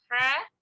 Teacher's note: Ha comes from the mid of the throat. Ha, ho. It's the heavy letter.